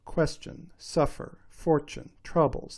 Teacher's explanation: they all have feminine endings which you may remember is that extra unstressed syllable at the end